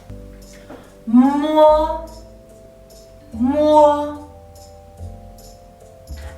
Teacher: Mo is a bilabial initial, but it's a nasal sound. During the pronunciation, your mouth is tightly closed, and the air will come out from your nose.